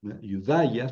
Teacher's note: Pongo el acento sobre la iota, pero la pronuncio sobre la alfa.